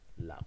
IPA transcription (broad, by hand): laɣo